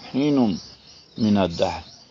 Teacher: اب حین نم میں غنہ ہے، میم مشدد کی وجہ سے